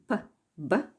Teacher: The plosives p, b are bilabial since the lips are pressed together.